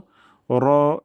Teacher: যেবার আগার পিঠ এবং তার বরাবর উপরের তালু সঙ্গে লাগিয়েই আমরা উচ্চারণটা করব র নিয়ম অনুযায়ী মোটা বা পাতলা হয় র এর উপর যখন জবর অথবা পেশ হয় তখন র মোটা হয় আর যখন জের হয় তখন পাতলা হয় তাহলে র এখন আমরা মোটা করে উচ্চারণ করব র যেন ঠোট গুল না হয়ে যায় এ ব্যাপারে আমরা কেয়ারফুল থাকবো।